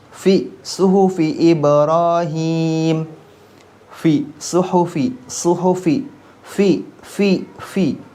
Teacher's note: suaranya samar, kemudian tidak ada getaran, fi, dan banyaknya nafas yang mengalir atau banyaknya udara yang mengalir